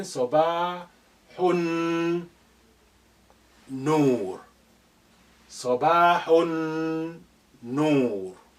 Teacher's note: Alif is silent for the same reason, because it's not at the beginning. Lam is silent here because noon is your sun letter. It's carrying shadda.